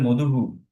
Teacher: উপর ডিপেন্ড করবে হের উচ্চারণটা যেমন ধর মধু এরকম দুই শব্দটা মধুর পরে বিসর্গ হয়ে গেল তখন আমরা কি বলব মধু হ বলব না কিন্তু আমাদেরকে বলতে হবে মধুহু